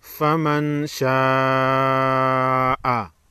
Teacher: بڑی مد کو 5 الف کے مقدار کھینچ کر پڑھیں گے، نون ساکن پر غنہ ہوگا، اس کے بعد حروف اخفا ہے۔